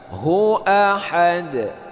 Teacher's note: Ini qalqalah kubra ya. Nah, itu karena kita wakaf di akhir ayat.